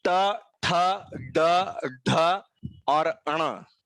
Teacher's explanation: अण अक्षर उच्चार करते समय जीभ मूर्धा की तरफ, यानी कि जो मुख का सबसे ऊपरी हिस्सा है उसकी तरफ होगा